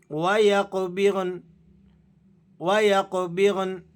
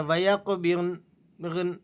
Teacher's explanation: آپ نے نون کو بالکل ظاہر کرنا ہے حالت وقف میں۔ بعض ساتھی غلطی کرتے ہیں کہ نون کو وقف کرتے وقت ظاہر نہیں کرتے ہیں اور اس طرح سے پڑھ دیتے ہیں وَيَقْبِغْن، نون کو واضح نہیں کرتے۔